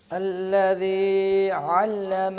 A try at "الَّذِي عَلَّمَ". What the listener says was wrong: الذی علم، لمبا نہیں کریں.